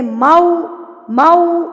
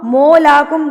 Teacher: मऊ ऊ लगाना है, डबल यू लगाना है, ना कि डबल ओ लगाना है। · मो नहीं है ये, मऊ है। होंठों को बिल्कुल गोल कर लें। मऊ मऊ, मौलाकुम गलत।